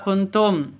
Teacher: nun mati bertemu dengan ta cara bacanya samar didengungkan siap-siap ke huruf ta-nya tanpa ditambah dengan ng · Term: ikhfa Hakiki